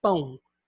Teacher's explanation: ele é nasal, ele tem a nasalização com a representação do tio, e ele é decrescente, porque começa com A, que é vogal, e desce para o O, que é semivogal